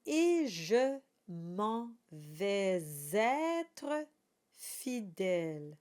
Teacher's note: we have the e at the very beginning, the closed sound, e, and then we have an e sound, je.